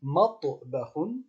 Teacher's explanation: Matbahun, c'est un T emphatique. Effectivement, ça contient le T, mais c'est un T emphatique